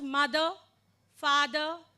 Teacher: sound it is not Dr it is not r R okay this R doesn't have any sound it's just when we pronounce mother father